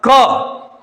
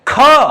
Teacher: क अल्प प्राण है, ख जोर से आ रहा है तो डबल हवा निकल रही है